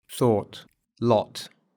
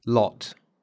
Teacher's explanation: Они отличаются не только долготой, но и тембром, потому что краткий гласный более открытый. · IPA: /ɔː/ - /ɒ/